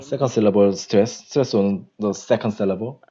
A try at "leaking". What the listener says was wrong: Uh, um, the stress falls on the first, no, no, no, leaking, uh, leaking, first syllable